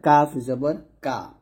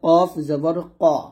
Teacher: এখানে দেখুন কাফটা হচ্ছে পাতলা আর কফটা হচ্ছে মোটা।